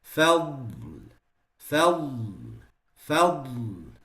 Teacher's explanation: There's a elongation that happens in the dad when you pronounce it sakin. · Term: al-istitala